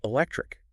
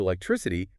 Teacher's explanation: But if I turn it into electricity, that K turns into an S sound